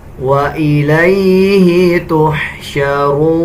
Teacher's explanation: اس کو 1 سیکنڈ لمبا کر کے پڑھیں گے. جب ہم وقف کریں گے تو نون کا زبر سکپ ہو جائے گا اور نون کی آواز آدھی نکالی جائے گی